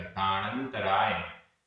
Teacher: दाण ना का अ, अंतराय का अ मिलकर बड़ा अ हो गया, लेकिन आधा ना और त ये संयुक्त अक्षर है, तो इस कारण से जो दीर्घ स्वर हुआ वह भी वापस छोटा हो गया, ह्रस्व हो गया।